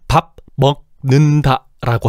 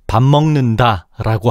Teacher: 밥의 종성 비읍이 먹의 초성 비음미음을 만나서 비음미음으로 바뀌어서 발음되고 있어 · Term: 비음화